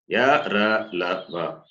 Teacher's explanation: Ya palatal, ra cerebral, la dental, and va is dental plus labial.